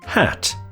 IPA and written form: hæt (Hat)